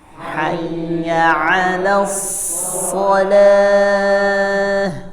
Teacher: Jadi pengucapan shadnya tebal karena pangkal lidahnya naik.